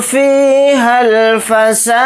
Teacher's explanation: ہا کو ڈائریکٹ لام ساکن کے ساتھ ملا کر پڑھیں گے، یہ الف نہیں پڑھا جائے گا